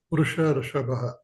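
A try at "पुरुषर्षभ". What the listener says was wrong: Purusha Rishabha, not Purusha Rishabha. Visarga not there. Here we have one Sandhi which we have seen. Not Purushar. Purusha plus Rishabha. A plus R. R is Guna. Guna letter. Guna Sandhi.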